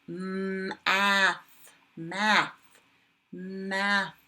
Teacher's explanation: Ooh, breathy. Breathy. No buzzing there. Goes on the quiet side.